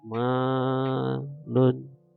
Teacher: ada alif setelah fathah, maka ma ini menjadi panjang 2 harokat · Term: mad tabi'i